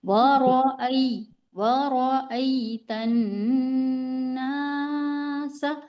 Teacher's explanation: गुन्ना को भी हम एक अलिफ की मिकदार करेंगे और अलिफ मद्दा को भी हम एक एक अलिफ की मिकदार खींच कर पढ़ेंगे